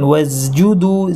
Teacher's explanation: সিনের সাথে জায়ের মিশ্রণ হয়ে যায়, বিশেষ করে পরে জিম থাকলে